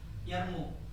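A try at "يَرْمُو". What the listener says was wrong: Panjang pendeknya dong.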